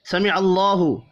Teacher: سمع اللہ، اللہ کا نام زبر کی وجہ سے پر پڑھا جائے گا